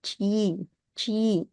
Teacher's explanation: the word chi is the only one where we kind of hear this Y sound in front of e